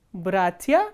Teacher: in bratia, as you can see that bratia, the first syllable is stressed, not the ending.